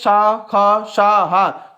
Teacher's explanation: अगर इसको बोलेंगे शा, ख, शा, हा, तो हमारे गले में संघर्ष होगा, इसीलिए इसको संघर्ष वर्ण कहते हैं